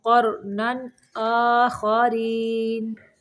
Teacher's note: جہاں پہ تنوین ہے اس کو صرف ظاہر کرنا ہے